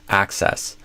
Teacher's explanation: So not axis, but access. And then the stress actually goes on the first syllable